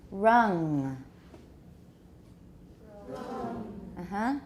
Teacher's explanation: Make the vowel longer. The final nasal is not very long. It's just a little bit affixed to the end.